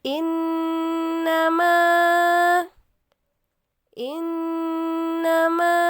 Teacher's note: didengungkan serta ditahan sekitar 2/3 harokat sebelum menyebut jelas huruf nun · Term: ghunnah